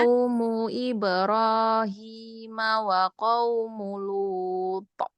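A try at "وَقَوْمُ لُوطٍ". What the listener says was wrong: jangan po gitu, jangan ada hamzahnya. Qaumu Lut. Sudah, Lut dan Lut. Nah, jangan gitu ya. Lut.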